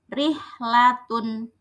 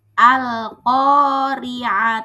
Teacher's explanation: Tarkik yaitu hukum membaca huruf ro dengan dibaca tipis